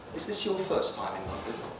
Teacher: if you do a higher rise it sounds a bit more casual